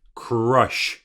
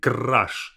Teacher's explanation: I say crush. I roll my R.